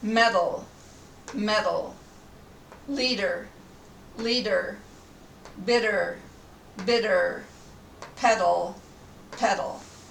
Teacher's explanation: exactly like the D sound at the beginning of a word it's shorter also it's not released and it's often called a tap